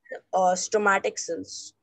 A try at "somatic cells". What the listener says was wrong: Somatic cells. stomatic नहीं होता बेटा, somatic cells होते हैं.